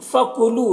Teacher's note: لو میں واو مدہ ہے، ایک الف کے برابر کھینچیں گے